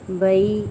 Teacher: بینا یہاں پہ مد لین ہو رہی ہے، بئی اس کو ہلکا نرمی سے موڑیں گے